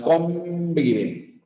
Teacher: Bien, por eso es que esta N ya no es una N, se ha convertido en una N bilabial, básicamente en una M de mamá